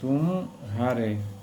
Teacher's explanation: किंतु तुम, अगर तुम, किंतु तुम हार में पूर्वक संक्रमण नहीं होता है। म और ह के बीच कुछ विराम, मतलब कि अवसान होता है। इसी विराम को हम लोग संगम कहते हैं।